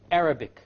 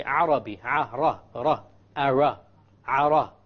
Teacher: The English R comes from the middle of the tongue, and the Arabic ra comes from the tip of the tongue.